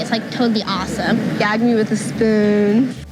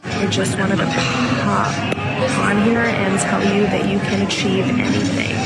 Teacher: Every sentence sounds like a question. There's that creaky little growl, a few essential words. And the vowels get stretched out for ages.